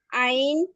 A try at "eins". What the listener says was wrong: আইনস, আইনস, নট আইন, আইনস। উচ্চারণটা ঠিক করে করেন।